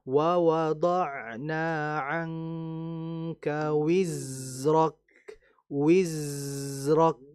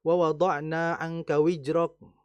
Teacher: Za itu merupakan huruf yang keluar dari lidah. Kemudian dia huruf yang memiliki sifat yang mengalir dan dia memiliki sifat namanya saofir. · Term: Za sukun